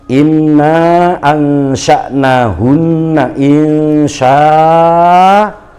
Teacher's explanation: Nah begitu, jangan dimatikan nggih. Hamzahnya jangan dibaca sukun, tetapi dibaca fathah panjang.